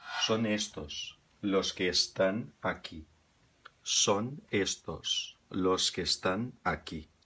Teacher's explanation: Uma é a maneira como se pronuncia na Espanha, ou na maior parte da Espanha, que é com o S bem pronunciado, quase assoviado